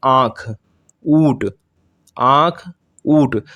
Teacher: जब आंख बोलेंगे तो आपका जो मुंह का जो हवा निकलेगी वो अधिक निकलेगी और नाक से कम निकलेगी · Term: अनुनासिक